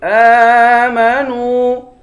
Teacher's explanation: نون کو واو سے ملا کر واو کو بھی ایک الف کی مقدار کھینچیں گے